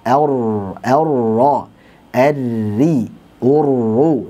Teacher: getarannya adalah getaran yang halus, getaran yang lembut, bukan getaran yang kasar. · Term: takrir